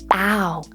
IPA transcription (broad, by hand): aʊ